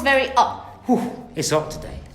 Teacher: so no h at the beginning of words no h and no T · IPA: [ɒʔ]